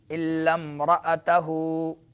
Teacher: وَأَهْلَهُ سوچ لو پہلے، وَأَهْلَهُ إِلَّا امْرَأَتَهُ، یہ امرأتہو جو ہے امرأتہو، لیکن جب ملا کے پڑھتے ہیں تو لام میم کے ساتھ مل جاتا ہے